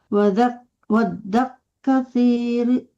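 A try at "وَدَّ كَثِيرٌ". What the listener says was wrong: Wadda kasi, jangan waddak kafnya tidak tasdid.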